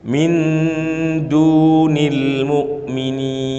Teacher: Du dibaca panjang karena setelah dal ada wawu yang diapakan? Disukun. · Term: mad tabi'i